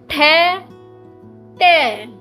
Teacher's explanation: प्रत्येक वर्ग का पहला और दूसरा वर्ण, पहला और दूसरा, ट और ठ। आप इन्हें बोलकर देखिए, आपके स्वर तंत्र में कोई कंपन आपको महसूस नहीं होगी। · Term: अघोष